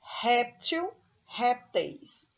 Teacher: Réptil, a sílaba tônica é no rep, eu tenho aí uma paroxítona, porque a sílaba tônica é a penúltima sílaba da palavra, então eu troco o il por eis, répteis.